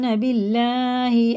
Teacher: اللہ کا لام زیر سے ہوتا ہے تو باریک ہوتا ہے